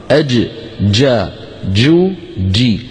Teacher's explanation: جا، جو، جي، صوتها محبوس لأنها من حروف أجد قطن بكت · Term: الجيم الفصيحة